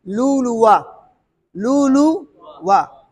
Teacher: लेकिन इसको खींचेंगे नहीं, लुलुआ, लुलुआ, लुआ, दूसरे वाव को खींचेंगे नहीं, क्यों, वो वाव मुतहरिक से तब्दील हुआ ना